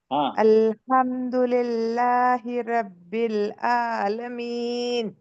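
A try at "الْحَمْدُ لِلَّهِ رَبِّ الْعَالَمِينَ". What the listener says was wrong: और थोड़ा प्रेशर करिए आलमीन और प्रेशर गले पे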